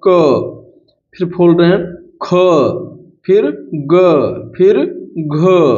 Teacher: देखिए ये सब कंठ से बोले जा रहे हैं, एक ही स्थान से बोले जा रहे हैं।